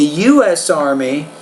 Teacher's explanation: Now with abbreviations, U.S., CEO, put equal stress on all the words.